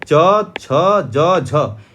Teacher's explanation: च, छ, ज, झ यह सभी आपका तालव्य वर्ण होता है